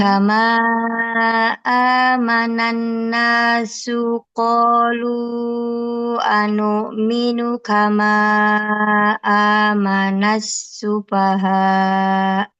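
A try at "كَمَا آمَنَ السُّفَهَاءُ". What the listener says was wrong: Oke, alhamdulillah itu ya. Catatan untuk huruf sya, tadi sya dan sa.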